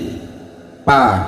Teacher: dua bibir sama-sama menyentuh atau menutup sehingga terjadinya pa